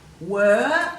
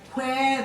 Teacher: if you say were there's no air after the W if you say where there is air after the W so you put the H in no in H onward now